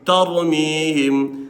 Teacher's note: دلته هم را غټه ویلی شي ولې ځکه را ساکن ده او مخکې حرف باندې زبر دی